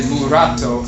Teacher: there's no letter L, there's a rolling R, the tongue tapping the roof of the mouth once